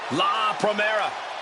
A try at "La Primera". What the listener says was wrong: You need to roll your R's a little bit on that, man. La Primera.